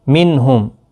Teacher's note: نون ساکن کے بعد ہا آیا ہے، اظہار حلقی ہوگا